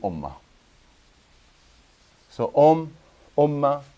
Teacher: as if you're saying the m twice